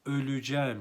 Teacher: burada e harfi daralma kuralıyla üye dönüşüyor öleceğim şeklinde telaffuz ederiz yine ğ de var tarihim şerefim şiirim